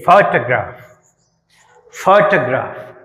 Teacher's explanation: ఫోటోగ్రాఫ్, ఫోటోగ్రాఫ్ పిహెచ్ఓకి ఎక్కువ stress ఉంటుంది, ఎక్కువ ఒత్తి పలుకుతాం